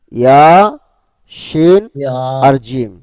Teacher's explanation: জিহ্বার মধ্যখান তার বরাবর উপরের তালুর সঙ্গে লাগিয়ে উচ্চারিত হয় তিনটি হরফ,